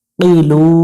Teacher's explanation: শেষে তিন আলিফের টান দেব, নুনের উপরে জবরটা আমরা সাকিন উচ্চারণ করব।